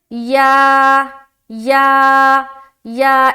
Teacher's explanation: آگے چلیں گے، یہ کیا ہے، یا یا یا، اس کا بھی مخرج ہے، اس کا بھی مخرج الگ ہے، زبان کا بیچ سے یہ ادا ہوتا ہے